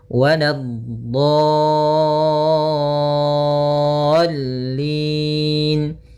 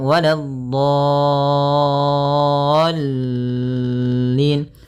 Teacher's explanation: Nah, jangan terlalu lama, jangan waladhdallin. Cukup ya menekan di lamnya, kemudian dikasrahkan langsung.